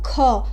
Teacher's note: ख जो है थोड़ा ज़्यादा हवा निकालता है, ऐसे ऐसे हाथ रख के देखिए, ख ज़्यादा हवा निकलेगा मुंह से, तो ये ख हो गया। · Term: महाप्राण